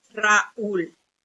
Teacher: tiene que ser tónica o sea que el golpe de la palabra caiga en esta vocal como en el caso de raúl · de la palabra entonces este es el otro tipo de hiato una vocal fuerte y una débil pero acentuada